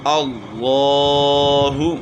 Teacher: لام کو موٹا بھی کرنا ہے اور کھڑا زبر ہے تھوڑا کھینچیں گے بھی